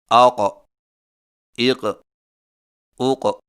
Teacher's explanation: قاف موٹی آواز اور جھٹکے والی ادائیگی کے وقت زبان کی جڑ کو کوے کے متصل تالو پر لگائیں